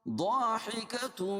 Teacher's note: ضاد کو موٹا پڑھیں گے اور الف سے پہلے زبر ہے اس لیے الف مدہ بھی ہوگا۔ حکتم مستبشرہ، مستبشرہ، تنوین کے بعد ادغام مع الغنہ کے 4 حرفوں میں سے میم ہے، اس لیے اس کو غنہ کر کے پڑھیں گے۔